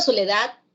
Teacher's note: la palabra soledad lleva la intensidad fuerza de voz en la última sílaba